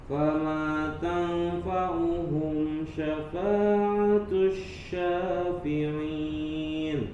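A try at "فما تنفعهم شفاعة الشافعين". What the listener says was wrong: Naam, kasih tambahan gunnah sedikit di huruf tanfa. Fama tanfa, agak ditahan.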